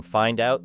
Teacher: the D moves toward the opening vowel and creates a connection